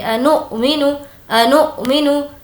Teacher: انؤمنو, انؤمنو, یہاں پر ہمیں جھٹکا دینا ہے کیونکہ حمزہ ساکنہ کے پڑھنے میں جھٹکا ہوتا ہے